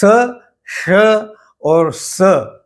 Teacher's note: इनका उच्चारण महाप्राण उच्चारण कहा जाता है, क्योंकि इसमें हवा का प्रवाह अधिक होता है